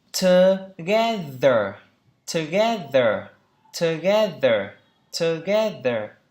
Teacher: Ba âm tiết, trọng âm tiết thứ hai.